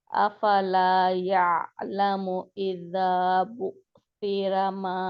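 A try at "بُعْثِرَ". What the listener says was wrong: इजा ये हमजा आप कर रहे हैं, इसको हमजा से बचाए, अपना थोड़ा सा गला ऊपर करे या कुछ करे। बू सिरा, सिरा, रबा के ऊपर होंठ गोल करें, पेश है।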